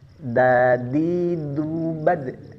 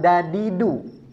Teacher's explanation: Tapi yang benar ujung lidah bertemu dengan gigi seri atas atau pangkal gigi seri atas. di gigi ditempelkannya, bukan di langit-langit mulut seperti huruf D. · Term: huruf dal